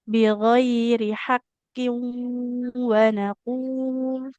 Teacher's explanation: karena qafnya kasroh, dia ketebalannya pun melemah ya